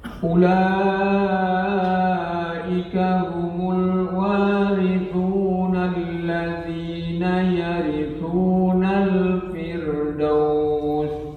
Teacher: Al-warithun itu mat arid lis sukun, jadi sepanjang 6 harokat lebih utamanya.